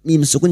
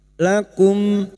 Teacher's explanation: mim sukun dibaca jelas tanpa mendengung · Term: zhar syafawi